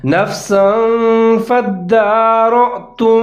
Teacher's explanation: سین کے اوپر تنوین ہے اور اس کے بعد فا حروف اخفا کا، تو تھوڑا سا میں نے یہاں پر اخفا کیا ہے، مطلب آواز کو ناک میں چھپایا ہے